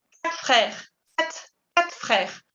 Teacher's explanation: Cuando hablamos rápido y después hay otra palabra, tendemos a omitir la R,